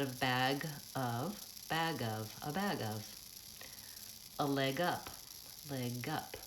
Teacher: it's almost like that G jumps onto the next word · when I'm linking my voice stays on and I use the voiced consonant at the end